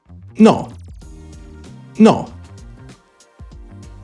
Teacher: no is pronounced with a rounded lips that stay open it's not like the English know where your lips start to